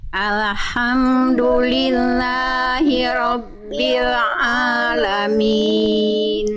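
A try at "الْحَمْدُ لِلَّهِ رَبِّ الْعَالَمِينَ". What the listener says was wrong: Jangan ale, tapi alhamdu. Lam sukun nggak punya sifat kolkola. Jadi ketika kita lafalkan jangan sampai alhamdu tapi alhamdu. Jadi bukan alhamdu tapi alhamdu.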